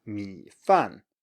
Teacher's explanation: 米 饭, you start low and you go lower, as it were. But 饭 starts all the way from the top and goes all the way down. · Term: falling tone